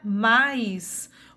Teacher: Ou na palavra mais, o má tem o som mais forte e o I tem o som mais fraco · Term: semivogal